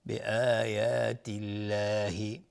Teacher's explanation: لفظ جلاله ترقیق هست، نازک تلفظ میشون، قبلش کسره اومده